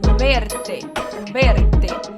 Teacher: som de v igual a gente tem no português no entanto a pronúncia ela é lábio com dente tá então lábio com dente